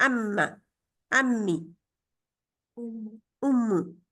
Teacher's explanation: تو وہ جب دونوں ملتے ہیں تو ہم کیا کرتے ہیں؟ आवाज को डबल अलहदा अलहदा पढ़ने की बजाय इकट्ठा पढ़ देते हैं